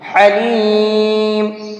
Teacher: ایک ہے بڑا ہا جو حلق کے مڈل سے نکلتا ہے، یعنی درمیانی حلق سے نکلتا ہے، اور ایک ہے چھوٹا ہا جو بالکل شروع حلق سے نکلتا ہے، تو دونوں کے پروننسیشن میں بھی فرق ہے، تو یہاں پر بڑا ہا نکال کر کے پڑھیں گے، حلیم۔